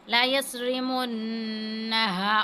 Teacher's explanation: اب صاد کو موٹا کر کے پڑھنا ہے